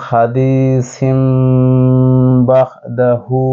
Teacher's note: দ্বিতীয় যে উদাহরণ সেটি হচ্ছে খাদিসিন কিন্তু তানবিনের পরে বা এসেছে তানবিনের পরে যদি বা থাকে মিম দ্বারা পরিবর্তন করে গুণনার সাথে পড়বো